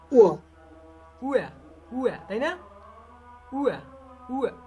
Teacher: উয়া, ঠোঁট গোল হবে এর জন্য